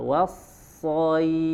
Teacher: Nah, wasso nih tadi tinggal dilatih ya, wasso, kemudian di sodnya ditebalkan, wassoif, keluar nafasnya coba bukan was, bukan dari tengah tapi dari ujung suaranya was. Nah, seperti huruf sin tapi pangkal lidahnya diangkat menjadi tebal, wassoif. Nah, fa-nya mengeluarkan angin, enggak?